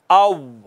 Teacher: दोनों होंठों को गोल करने से वाओ अदा होती है